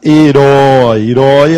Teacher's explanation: herói a sílaba tônica é a última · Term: oxítona